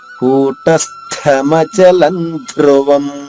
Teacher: ఇక్కడ రెండు మహాప్రాణాలు ఉన్నాయి కూటస్త ఇక్కడ స కి త వత్తుగా ఉంది అక్కడ ఒత్తు అది అలాగే ధృ అక్కడ కూడా ఒత్తు తుధ కూటస్థమచలం ధ్రువం